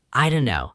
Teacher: The T disappears, the sounds compress.